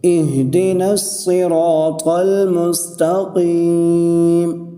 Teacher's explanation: دیکھو میں نے قاف کو ایک الف کی مقدار کھینچا ہے · قاف کے نیچے زیر ہے، قاف کو موٹا کر کے پڑھیں گے، اور قاف کے ساتھ یا مدہ ہے، ٹھیک ہے، اس لیے قاف کو ایک الف کی مقدار کھینچ کے پڑھیں گے۔